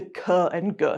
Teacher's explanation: sounds that are produced by pressing the back of your tongue up against the back of the roof of your mouth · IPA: /k/ and /g/